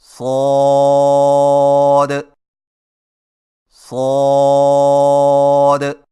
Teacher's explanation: صاد کی ادائیگی میں زبان کی نوک کو ثنایا سفلی کے کناروں سے مضبوطی سے لگا کر اور زبان کے پچھلے حصے کو تالو کی طرف بلند کرتے ہوئے موٹی اور سیٹی جیسی آواز میں پڑھیں